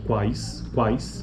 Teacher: são analisadas como uma sequência de oclusiva velar Glide seguida de um ditongo decrescente